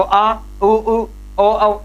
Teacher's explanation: इनका उच्चारण करने पर कंपन कहां पर हो रहा है, जीवा के जड़ वाले भाग में हो रहा है